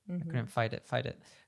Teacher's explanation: the t turns to a d and connects to the it